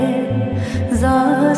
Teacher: হায়ের মাখরাজ মধ্য কণ্ঠনালী একটু চাপিয়ে বলবে। জায়ের মাখরাজ জিহ্বা অগ্রভাগ নিচে দাঁত আগা দিকে লাগিয়ে যা সহি হয়ে আসবে